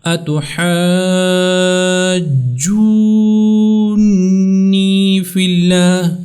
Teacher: نون کے اوپر آپ نے غنّے سے اس کو ادا کرنا ہے، کیونکہ اس کے اوپر تشدید ہے